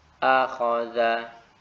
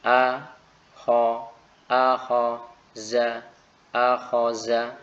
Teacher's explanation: Yang senantiasa tetap harus diperhatikan adalah ya tentunya makhraj dan juga sifat huruf, sehingga tidak dibenarkan misalnya membaca dengan mengganti huruf, misalnya seperti ini ya, a, kho, za, akhoza. Perhatikan di sini saya mengucapkan huruf zal dengan zai menjadi akhoza, dan ini salah ya, ini kesalahan yang jali, yaitu kesalahan yang parah ketika mengubah huruf zal menjadi zai.